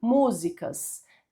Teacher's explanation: acentuada por ser uma palavra proparoxítona que tem a antepenúltima sílaba mais forte